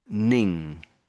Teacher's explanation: to get the ning, you've got to lift your tongue at the back to get that sound.